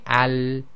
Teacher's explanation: has got stop stoppage of breath so when we say Al there's no burst of air at the end and it's between stoppage and continuation not completely stops and not carrying on too long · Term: lam